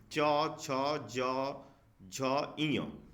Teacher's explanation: च वर्ग जो होता है च वर्ग वह तालू से बोला जाता है